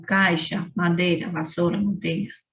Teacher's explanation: Ditongos que têm uma pronúncia reduzida, como caixa, madeira, vassoura, manteiga.